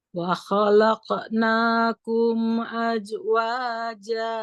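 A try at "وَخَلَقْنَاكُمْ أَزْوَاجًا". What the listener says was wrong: Nah, di sini dicoba Bu, azwa. Huruf zai, tidak aja. Wa khalaqnakum azwaja.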